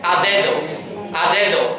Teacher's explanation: la primera D ha cambiado y es igual que la segunda porque está en el mismo contexto, está entre dos vocales